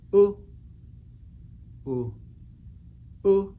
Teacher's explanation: our voice is bringing that sound ooh a little bit higher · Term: high tone u